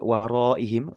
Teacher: waroihim di situ panjang ya mad wajib muttasil ee mad yang memang bunyi panjang